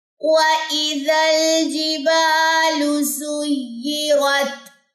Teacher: وَإِذَا الْجِبَالُ، لمبا نہیں کرنا، با تو لمبا ہوگا الف مدہ کی وجہ سے، لیکن لام کی پیش لمبی نہیں ہوگی